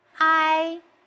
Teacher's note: the first tone is flat